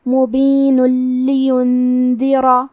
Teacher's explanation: لام حروف الادغام بغیر غنہ میں سے ہے، تو ہم تنوین کو لام میں ملا کے بغیر غنہ سے لیکن تشدید کے ساتھ یہ حکم کو ادا کریں گے